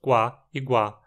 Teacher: nas consoantes tínhamos duas lábio velares qua e gua que não tinham versões aspiradas